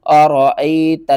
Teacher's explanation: أرأيت یا ساکن سے پہلے زیر ہے، حروف مدہ ہے، ایک الف کے برابر آپ نے کھینچ کر پڑھنا ہے۔